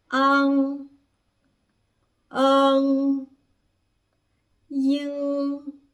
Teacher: Aqui no último grupo a gente vai ter o som de NG no final, que é nada mais, nada menos que uma travada na garganta